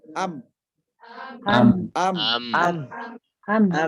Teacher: Mim harus disertai dengan gunnah yang keluar dari al-khayshum.